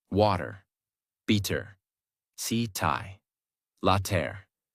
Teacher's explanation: In these words, the mouth does not stop strongly on the T. The tongue touches quickly and moves on. That is why it sounds softer.